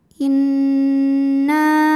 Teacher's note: Nun tasydidnya dihukumi gunnah musyaddadah atau wajibul gunnah karena nun bertasydid. Cara bacanya didengungkan. Inna. Na dihukumi dengan mad tabi'i zahiri sebab ada alif sebelumnya fathah.